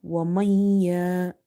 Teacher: you have to do idgham, meaning merging, as well as nasalization, meaning gunna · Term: idgham with gunna